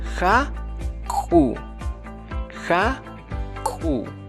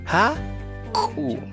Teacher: Aquí no intervienen las cuerdas vocales al momento de producir una K apostrofada, simplemente en la boca con el apoyo de la lengua. Haku. Es la segunda consonante reforzada.